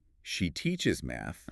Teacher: I'm stressing the verb. The pitch goes up on teach. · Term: pitch accent